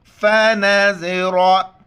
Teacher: यहाँ पर उरूफ़ एल की हार है, इस वजह से यहाँ पर नाक में आवाज़ हम पैदा नहीं करेंगे। ज़ा और रा मोटे अल्फाज में से मोटा करके पढ़ेंगे।